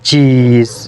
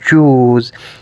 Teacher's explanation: we can say that e is unrounded whereas ooh is rounded